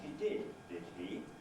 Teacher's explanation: constant polarity tag with a fall plus a rise